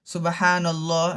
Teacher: لام میں اس کو موٹا پڑھنا چاہیے